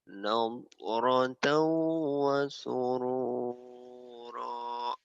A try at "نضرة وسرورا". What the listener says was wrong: tuh yang bikin jeleknya itu kamu nadanya langsung turun. Kalau stabil aja. Nadratan wa surura. Nadratan wa surura. Nadratan wa surura. Nah itu yang bikin kurang bagus tuh. Nah naik turun nadanya. Kalau mau stabil, mau turun turun sekalian dasar, mau tinggi tinggi sekalian. Nadratan wa surura gitu ya.